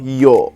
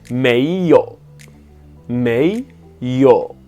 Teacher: ce troisième ton va devenir comme un ton grave et plat. Donc c'est pas un ton qui descend, qui monte, ça va faire yo, et qui va rester là en fait, qui ne va pas remonter.